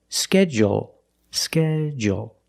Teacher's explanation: in both pronunciations we end with a dark L